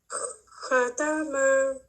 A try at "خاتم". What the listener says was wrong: ایک بار پھر خاتمہ، خا ہیوی پن کو لائیے، خاتمہ، پھر سے بولیے، آپ کا تھوڑا ابھی لائٹ ہے.